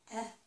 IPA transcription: ɛ